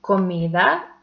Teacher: It has also three syllables and the last one is the stressed one. And the last example is comida and the second syllable is the stressed one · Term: stressed syllable